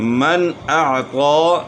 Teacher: من اعطى نون ساکن کے بعد حروف حلقی میں سے حمزہ ہے تو اس لیے نون ساکن میں غنہ نہیں ہوگا